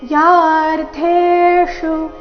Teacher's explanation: ಚರಣದ ಕೊನೆಗೆ ಮೂರ್ಧನ್ಯ ಶಕಾರದೊಂದಿಗೆ ರಸ್ವ